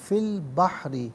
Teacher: فی البحری، فا کے نیچے زیر ہے، اسے البحری کے لام ساکن کے ساتھ ملائیں گے، درمیان میں سے الف علی حمزہ کو حذف کیا جائے گا، اور بحری میں را کے نیچے زیر ہے تو ناظرین و سامعین اسے باریک کر کے پڑھا جائے گا